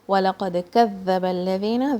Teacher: dal and there's another dal, they both come from the tip of the tongue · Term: makhraj of dal